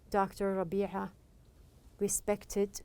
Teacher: the r sound is voiced which means you use your vocal cords it is defined by the position of your tongue to produce